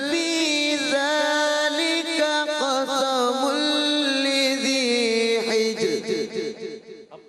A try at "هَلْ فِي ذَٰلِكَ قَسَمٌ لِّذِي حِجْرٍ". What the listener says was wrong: قاف کی ادائیگی اور پر کریں، تھوڑا قاف کو اور پر کریں. دوبارہ دوسرا جو قاف ہے وہ پر رہے نا.